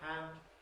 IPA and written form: hænd (hand)